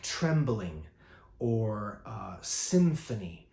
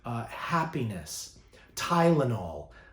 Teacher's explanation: three syllable words with the accent on the first syllable